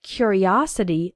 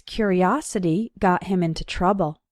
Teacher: And in the noun form, curiosity, the third syllable is strong, os. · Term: strong syllable